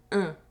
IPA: ɛ̃